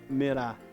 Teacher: o cam é a sílaba mais forte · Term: sílaba tônica